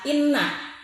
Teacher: Kalimat inna, hukum bacaan adalah gunnah, sebab huruf nun bertasydid. Cara baca huruf N didengungkan pada hidung, panjangnya satu alif atau dua harakat.